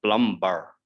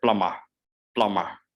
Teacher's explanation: in this one b is silent so we do not say plum bar we say plummer plummer